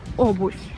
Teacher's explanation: usually if this letter O is not stressed, it sounds like A, but here the stress falls on this letter